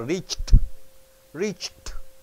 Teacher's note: after CH ed comes here ed is changed into T